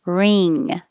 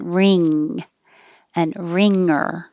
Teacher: keep your tongue high for the e and then the back of the tongue goes very high for the um ng combination